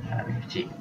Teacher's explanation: Kemudian kita ikhfakan kepada huruf berikutnya iaitu ba dan mengekalkan sifat dengungnya dengan sempurna dengan kadar dua harakat. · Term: hukum iqlab